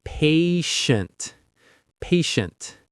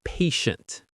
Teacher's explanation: The stress is on that first syllable.